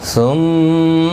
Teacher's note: ثم میم مشدد پر غنہ ہوگا · را پر پڑھا جائے گا زبر کی وجہ سے